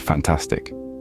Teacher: fantastic follows the stress pattern of unstressed, stressed, unstressed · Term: stress patterns